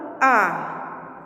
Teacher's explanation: आप लोग अ कि चंद्र का उच्चारण कर रहे हैं तो हमारे मुंह और नाक दोनों से ध्वनि आ रही है यानी दोनों से आवाज आ रही है इसलिए इसे अनुनासिक कि कहा जाता है समझ में आया बच्चों